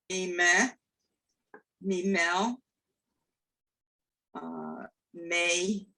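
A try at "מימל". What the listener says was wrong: No, it's E again. There's not the final letter, rarely, very few cases does it have a vowel.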